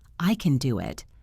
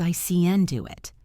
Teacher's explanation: But in a normal conversation, can is usually an unstressed grammatical word. So it reduces to a schwa. It sounds like CN.